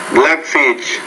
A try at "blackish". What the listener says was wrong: Yeah, and 22, the word's actually blackish. Not blackfish, but blackish.